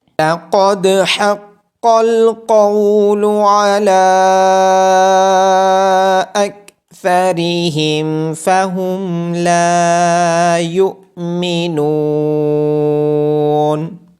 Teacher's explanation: عین کی آواز گلے کے درمیان سے آئے گی۔ · لَقَدْ حَقَّ الْقَوْلُ عَلَىٰ أَكْثَرِهِمْ فَهُمْ لَا يُؤْمِنُونَ، قاف کو موٹی آواز کے ساتھ پڑھا جائے گا۔ دال پہ قلقلہ ہوگا